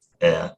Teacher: in traditional London dialects, where non-roticity seems to have happened early on in British English, you often have a central off-glide where the rhotic used to be